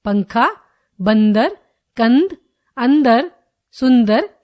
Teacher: इसका उच्चारण करते समय ध्वनि केवल नाक से निकलती है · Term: अनुस्वार